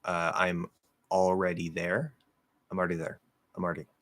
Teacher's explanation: really fast speech, yes, you can say it like RD, and you're gonna flap that D.